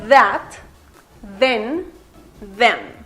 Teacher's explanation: El otro sonido de la combinación TH es como una D en español. Este sonido produce una pequeña vibración. Por ejemplo, en palabras como that, then, them.